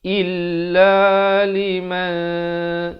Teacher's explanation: Ramai orang baca illa, bukan illa tapi il. Hamzah baris bawah bunyi i, bukan bunyi a bunyi i.